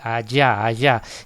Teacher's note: es más palatal, es una palatal lateral